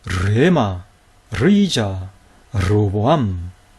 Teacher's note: 이 르가 단어 첫머리에 올 때는 다 거센 소리 흐를 동반하고 있죠